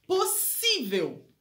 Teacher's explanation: É uma paroxítona, porque a sílaba tônica tá no si